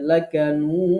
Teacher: লাস্টে ডালে কলকলা করতে হবে